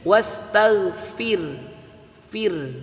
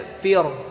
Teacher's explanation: jika harkat kasroh bertemu ra sukun dibaca tipis